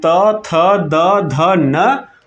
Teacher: ये तो आपके हो गए दंत व्यंजन